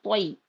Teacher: तोया जबर तोई, या साकिन से पहले तो पे जबर आ रहा, तो यालीन हो रहा है यहाँ पे। यालीन को नर्म आवाज के साथ जल्दी अदा करेंगे।